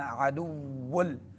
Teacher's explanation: واو کو ہونٹوں کو گول کرتے ہوئے ادا کرنا ہے